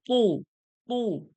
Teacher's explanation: মোটা করে ঠোঁট গোল করে